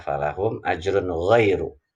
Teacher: Yang pertama ajrun dan ghairu. Dua-duanya adalah ro dibaca tebal. Kenapa? Karena di sini huruf ro-nya berharokat dhammah. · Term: ro tafkhim